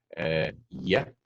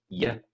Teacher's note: that's voiced, and we shove our tongue up at the side of our mouth and make a kind of E shape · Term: Y sound